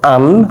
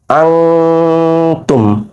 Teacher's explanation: দন্তনা উচ্চারণটা কনভার্ট হয়ে যাবে অনুস্বরে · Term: গোপন গুণনা